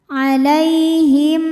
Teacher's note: Ini hurufnya nun. Maka mim sukun kita bunyikan dengan jelas. Artinya masih bunyi m dan tidak perlu kita tahan. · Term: izhar syafawi